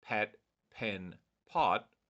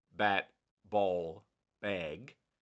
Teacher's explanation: very little vibration of the vocal cords, so they're unvoiced or voiceless, and then bat, ball, bag, there is a strong vibration in your vocal cords